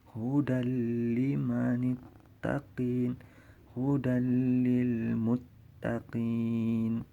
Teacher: Udah habis yang bi gunnahnya, sekarang yang bila gunnah, idgham bila gunnah. Jadi tanpa gunnah, tidak dengung dia, cuman dimasukkan, hilang bunyi nun sukun atau tanwinnya hilang.